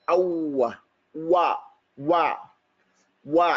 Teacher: The wow is pronounced by gathering the lips together.